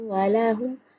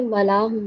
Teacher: واؤ کے اوپر بھی زبر ہے اور لام کے اوپر بھی زبر ہے جو کہ حرکات ہے اور حرکات لمبی نہیں کی جاتی۔